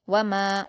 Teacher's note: अगली आयत है वाव पर हरकत जल्द पढ़ेंगे। मीम पर अलिफ मद्दा है। दो हरकात खींच कर पढ़ेंगे।